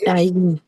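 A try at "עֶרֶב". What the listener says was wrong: Non, non, non. Aïn, c'est silencieux. C'est pas yé. C'est pas yé.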